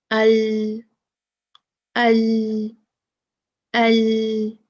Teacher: تو یہ پورشن، یہ حصہ زبان کا اور اتنا حصہ آگے کا لام کا، لام ادا کرنے کے لیے لگے گا کہاں؟ اوپر سامنے کے دانتوں کے مسوڑوں کو